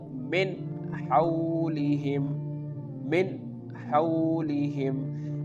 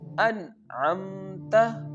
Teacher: we have to pronounce the noon sound very clearly without taking it from nose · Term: izhar